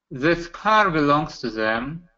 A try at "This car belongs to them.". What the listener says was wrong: Them. So on the first one, I heard a little bit more of a Z sound instead of a TH sound. So this car belongs to them.